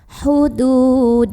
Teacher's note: Ini lam jalalahnya dibaca tafkhim. Kenapa? Karena huruf sebelumnya yang dal barisnya fathah, maka bacanya tebal.